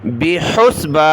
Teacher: حا کو گلے سے نکالنا ہے